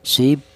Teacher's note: apabila ada huruf ba yang mati ini cara bacanya dipantulkan sib seperti itu. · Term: qalqalah